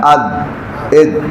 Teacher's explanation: زبان کا اگلا حصہ یہ سامنے والے دانتوں کے اندر جو مسوڑے ہیں وہاں لگے تو دال ادا ہوتا ہے، اد، اد، تو زبان ساتھ چپکی نہ رہ جائے، جب جدا ہو تو جھٹکا سا لگے، لد، اسی کو قلقلہ کہتے ہیں۔